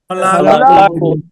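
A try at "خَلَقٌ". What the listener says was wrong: খলা টান দিল কে, টান হবে না।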